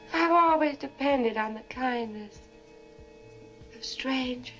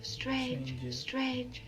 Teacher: you hear how there's no r in strangers strange strange strangers that's a non-rhodic accent but that's changed and